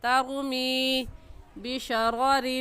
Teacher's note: میم یا زیر می کو کھینچیں گے کیونکہ یا ساکن سے پہلے زیر آ گیا ہے